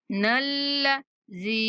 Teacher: لام پر تھوڑی دیر زبان کو روکنا ہے ، نلذی، زال کے بعد یا مدہ اسی لیے کھینچ رہی